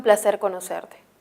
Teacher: esta es una oración enunciativa en el cual yo expresó algo informo algo su tono es descendente